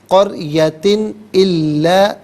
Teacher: الا میں حرف حلقی حمزہ آ رہا ہے، تو ناظرین یہاں پر اظہار کیا جائے گا، غنہ یا اخفا نہیں کریں گے ۔ قریتن الا نحن مہلکو علیحدہ، ہا علیحدہ ملا کر پڑھیں